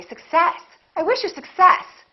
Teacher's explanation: in this case we stress the second part